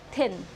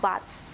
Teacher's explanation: These sounds are formed with the tongue tip behind the upper front teeth, the initial sound of word like thin, and the final sound of bath are both voiceless dentals.